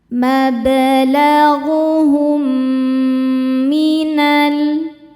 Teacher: [bernyanyi] Berikutnya ada hukum idgham mimi sebab ada mim sukun bertemu dengan mim yang berharakat. Cara bacanya mim pertama dimasukkan atau dileburkan ke mim kedua disertai dengungan.